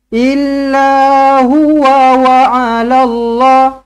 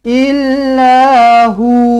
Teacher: Nak baca huwa, kena sambung. Nak berhenti, kena hu.